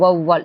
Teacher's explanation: அவ்வையார் வவ்வால் என சொற்களின் முதலில் வரும்பொழுது தனக்குரிய இரண்டு மாத்திரை அளவிலிருந்து குறைந்து ஒன்றரை மாத்திரை அளவில் ஒலிக்கிறது. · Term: அவகார குறுக்கம்